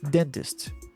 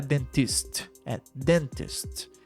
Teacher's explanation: Dentist den é a sílaba mais forte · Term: sílaba tônica